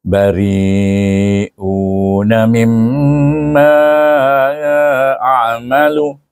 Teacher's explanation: mim bertasydik dibaca dengan wajibul ghunnah